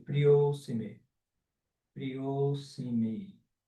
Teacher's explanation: Você junta tudo, né? Porque aglutinou esse A com o próximo A e o Visarga aí sumiu.